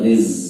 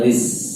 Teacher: Tapi kalau tenggorokan tidak bergetar riz, nah itu salah. Jadi kalau za itu tenggorokannya harus bergetar.